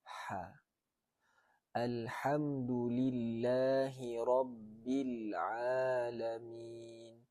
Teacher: tempat keluar huruf ha tu di tengah-tengah halkum ni.